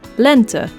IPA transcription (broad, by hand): lɛntə